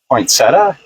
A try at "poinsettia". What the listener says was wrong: It's not a poinsettia. It's a poinsettia. There's no T in them. Well, some people say poinsettia. I don't think that's it. I think it's poinsettia, but there's no T in the middle. It's not a poinsettia. It's a poinsettia.